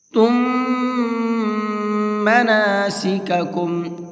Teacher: تم مناسککم، یہاں اس میم کے اندر غنہ کریں گے، اس لیے کہ میم ساکن کے بعد میں ایک اور میم آ رہا ہے۔ میم ساکن کے بعد میں اگر میم آتا ہے تو وہاں میم کو میم میں مکس کر دیتے ہیں اور ساتھ ساتھ غنہ کر کے پڑھتے ہیں۔ غنہ کہتے ہیں ناک میں آواز کو روک کر کے پڑھنا۔